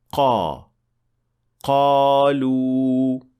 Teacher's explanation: the tongue should be touching the soft palate to make it sound like a correct qaf